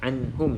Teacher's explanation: jadi pastikan lidah tersebut lidah ataupun tempat keluar Nun ni kan lidah tu akan kena pada bahagian lelangit depan tulah anhum Nun tu jadi stay kan dia sehinggalah kita selesai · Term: nun sukun